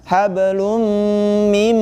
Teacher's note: Untuk yang selanjutnya di situ ada nun sukun bertemu dengan huruf mim, maka di situ masuk ke hukum nun sukun atau tanwin bertemu dengan huruf mim, maka dihukumi idgham bi gunnah ya, maka dimasukkan dan ditahan 2 harokat